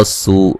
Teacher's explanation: را کو موٹا ادا کریں گے، سین کو باریک سیٹی سے ادا کریں گے، و مدہ ہے۔ لون یہاں نون تنوین کا موٹا اخفا ہے۔